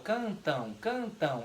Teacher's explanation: O M se transforma em U. Porém, na palavra cantam, tem um N.